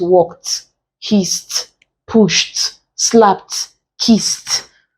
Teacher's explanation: once it ends in a voiceless consonant and you're bringing the past then it should contain consonant T